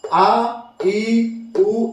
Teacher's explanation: आ, ई, ऊ, इसमें टाइम ज्यादा लग रहा है, यानी दोगुना समय लग रहा है, तो इसीलिए इन्हें दीर्घ स्वर के कैटेगरी में रखा गया है।